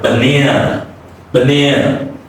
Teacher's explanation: So the first A is reduced and the last A is reduced.